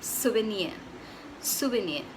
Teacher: The R is optional, but if you're going to pronounce it, it has to be a half R